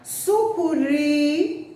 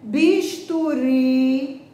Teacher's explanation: Quando a sílaba tônica não é a última, a palavra termina com E. Quando a sílaba tônica é a última